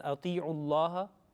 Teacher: Thick because it is preceded with the dhamma. Okay, the previous letter was dhamma. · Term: lamul jalala